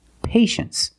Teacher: You know the T is pronounced sh-sh.